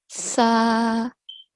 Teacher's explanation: the tip of the tongue touches the edge of the upper front 2 teeth. Okay? And as we say the word, you would feel the air coming out of the mouth from both sides of the tongue.